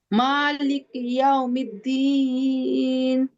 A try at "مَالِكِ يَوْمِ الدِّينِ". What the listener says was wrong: চমৎকার হয়েছে। তবে ইয়াও এখানে টাইম দেওয়া হয়েছে, এটাতে টাইম দেওয়া যাবে না। ইয়াউমিদ্দিন ইয়াউমিদ্দিন, যে আবার বলুন তো এটা ইয়াও। ইয়াও,